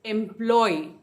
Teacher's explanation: एम्प्लॉय, third syllable पे stress है